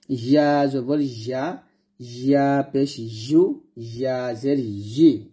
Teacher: জিহ্বার মধ্যখান উপরে তালুর সঙ্গে লাগাবো, লাগাইলেই উচ্চারণ সুন্দর আসবে। · ইয়া জিহ্বার মধ্যখান থেকে উচ্চারিত হয়